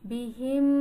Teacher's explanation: হামিম জের হিম, মিম সাকিনের পরে মিম আসছে, তাহলে মিম সাকিনের ঈদগাম, তাহলে এক্ষেত্রে মিম সাকিনকে গুন্নাহ করে পড়তে হবে।